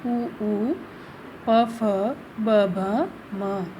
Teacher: इन वर्णों का उच्चारण करने पर ओष्ठ आपस में मिलते हैं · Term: ओष्ठ्य